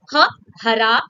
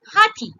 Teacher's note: our glottal consonant, that is ha, that comes from glottal area or the throat area of your mouth